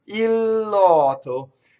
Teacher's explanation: So, notice the il lotto. Now, the danger in the next word, in lotto, is that it's an open O, and we love, as Americans, we love to double the T.